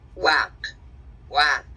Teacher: Utilizan la W con la glotal al pronunciarlo, pero no por escrito, sino que nada más en sonido. Dicen guac, guac.